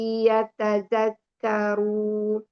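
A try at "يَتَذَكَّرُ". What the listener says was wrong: Zakaru, dia nggak ada mat loh. tazakkar.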